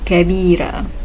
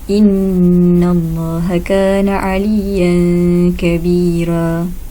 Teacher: Terdapat 1 sahaja khilaf pada perkataan kabira. Warsh membaca dengan tarqiq ra, kabira.